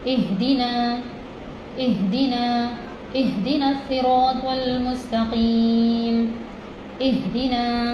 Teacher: ہ حلق کا سینے کی طرف والا حصہ